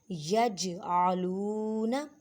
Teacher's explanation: جیم ساکن ہے، حروف کلکلا میں سے ہے. اب جیم کی آواز کو یہاں پہ کلکلا کریں گے